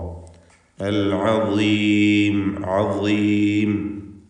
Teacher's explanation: നാവിന്റെ അറ്റത്തിന്റെ മുകൾഭാഗവും മേലെ മുൻപല്ലും അതിനിടക്ക് ഇങ്ങനെ അല്പം ലൂസാക്കി തഫ്ഹീമോടുകൂടി ഉച്ചരിക്കേണ്ട അക്ഷരമാണ് ള